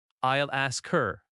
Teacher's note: The L flows into ask. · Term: linking